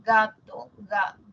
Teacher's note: Cuando nosotros decimos gato, ga, el postdorso toca el velo, no el ápice, ¿no? Sería loco que la lengua que está acá, la puntita, se vaya hasta acá.